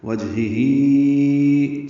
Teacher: وجہی 4 حرکات اس کو ہم لمبا کرتے ہیں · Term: مد منفصل